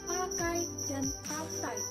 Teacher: diftong naik menutup maju atau AI